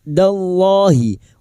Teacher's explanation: lam jalalah yang didahului fathah dibaca tafkim